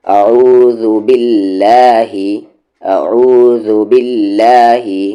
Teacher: light ہوگا، لام جلالہ سے پہلے زیر ہے